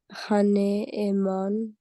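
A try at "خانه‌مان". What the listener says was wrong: Perfect, khane-aman, exactly.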